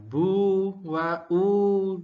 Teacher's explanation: Kemudian ini tetap panjang bedanya. Bu wa u panjang mad thobi'i. Satu ayunan saja